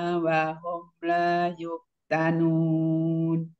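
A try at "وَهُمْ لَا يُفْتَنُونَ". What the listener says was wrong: Wahum la yuftanun. Alirkan fanya. Yuftanun.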